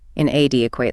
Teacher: Notice how the stress falls heavily on the second syllable.